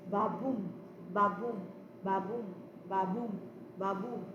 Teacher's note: the first syllable is unstressed, while the second syllable is stressed, followed by unstressed, stressed, unstressed, stressed. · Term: iambic pentameter